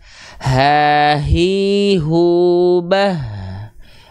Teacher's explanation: H besar dia punya sifat hams kadarnya adalah mengalir nafas